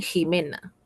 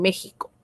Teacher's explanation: se llaman velares porque la parte de más al fondo de la lengua choca, golpea el velo del paladar